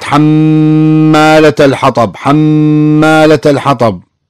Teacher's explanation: أي ميم مشددة معها غنة